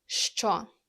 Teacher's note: makes two sounds, sh and ch